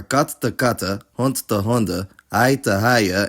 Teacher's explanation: the N disappears, it’s just pronounced [ə]